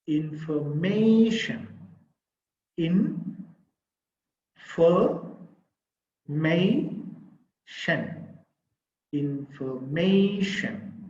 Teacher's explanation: you see the third syllable is the stressed syllable here